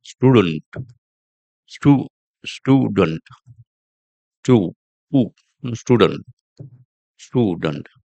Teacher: In British accent, you get a oo sound. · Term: long oo sound